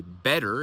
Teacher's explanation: This is why a lot of Americans will say better instead of better because it's easier just to have a voiced consonant in the middle of an already voiced words.